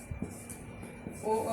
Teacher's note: ओ, औ का उच्चारण स्थान कंठ ओष्ठ।